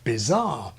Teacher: Brits do sometimes have final stress